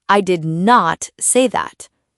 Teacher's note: Native speakers only use full words when they want to emphasize something, like, I did not say that. The not is strong because they're making a point.